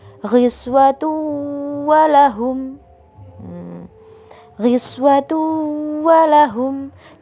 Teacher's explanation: Nah, huruf wawu termasuk dalam huruf idgham bi gunnah juga. Jadi, cara membacanya adalah dengan cara masuk disertai dengan mendengung. Ghiswatu walahum. Ghiswatu walahum. Dengungnya satu setengah alif.